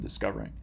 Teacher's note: recalling stress is on the second syllable just as in discovering